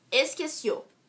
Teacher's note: A sílaba mais forte é o cio, que é a última sílaba, oxítona.